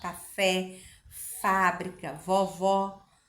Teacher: acento agudo é pronunciada de forma aberta você abre a boca para falar